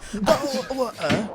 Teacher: the Cockney accent does have like all these glottal stops and glottal T's.